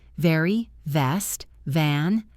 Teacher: The V sound is made with your top teeth touching your bottom lip like a vibration.